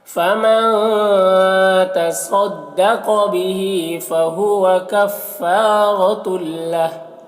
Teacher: तुल यहाँ पर तनवीन के बाद लाम है, हुरूफ यरमलून में से, तो तनवीन को लाम से मिलाकर बगैर गुन्ना के पढ़ेंगे, इसको इदगाम ताम कहते हैं।